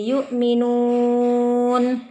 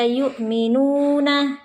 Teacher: Di depan mad tabi'i ada bertemu dengan huruf hidup. Jadi kalau kita wakafkan bacanya menjadi yu'minun, tidak dibaca yu'minuna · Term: mad arid lis sukun